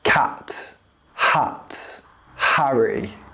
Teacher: keep your mouth more relaxed and open slightly, less than for an American A. It should sound like the A in cat or bat.